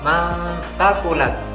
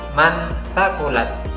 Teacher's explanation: Dalam lafaz tersebut terdapat huruf nun sukun bertemu dengan huruf sa, maka huruf nun dibaca dengan samar dan mendengung mendekati huruf sa, masakulat, dan tidak boleh dibaca dengan jelas mansakulat. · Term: ikhfa